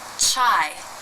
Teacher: when I say the word chai my tongue tip is in the front of my mouth the whole time